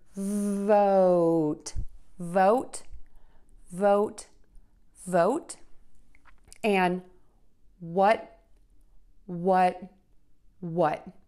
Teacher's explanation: And then for both of these words, we're going to end with a T by touching the tip of the tongue to the back of the top front teeth. Now, what I do when I say these words, vote and what, is I just hold the tongue there and I don't let the air explode out. If you say vote and what, with an extra explosion, everyone's still going to understand you, so that is your choice.